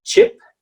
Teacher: my jaw is just a bit further down than a spanish e